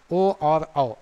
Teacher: ओ का उच्चारण स्थल कंठ और ओष्ठ होता है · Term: कंठ ओष्ठ